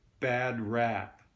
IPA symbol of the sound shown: æ